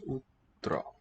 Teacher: Pure high back vowel with rounded lips.